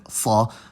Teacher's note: pronounced with your tongue applying more pressure in the back of your mouth. The trick that I've heard for this, I believe in some lang focus video, is to put your mouth in position to say ke, but then say sa instead, or whatever emphatic sound it is. · the voiceless alveolar emphatic fricative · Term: emphatic consonants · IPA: [sˤ]